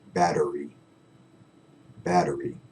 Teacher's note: be lazy with our t's and turn them into d's